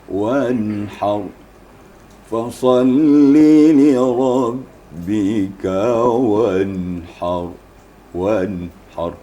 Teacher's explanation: nun sukun bertemu ha kan kita ketahui hukumnya adalah izhar. Jadi kita tidak boleh ditahan suara, langsung aja.